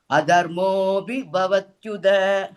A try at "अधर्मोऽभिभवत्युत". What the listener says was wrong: सम्यक् अत्र भवत्युदा नास्ति तकार अस्ति किल